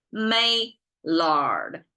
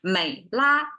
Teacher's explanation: Chinese cannot pronounce consonant on its own. So we have to add a vowel after the d thing, which becomes de, you see.